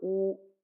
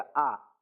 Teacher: आ बोलने में ओष्ठ का इस्तेमाल नहीं होता है, कंठ का होता है।